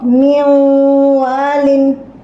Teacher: After nun sakin wow, you will merge this nun in wow.